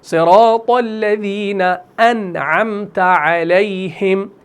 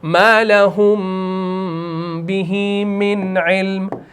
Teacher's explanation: اس نون ساکن کو آپ نے ظاہر کرنا ہے کیونکہ عین آ رہا ہے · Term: اظہار